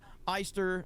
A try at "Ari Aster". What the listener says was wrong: There's no way it's pronounced Eister. I've always heard Ari Aster. I've never once heard it pronounced Ari Eister. I've always heard Ari Aster.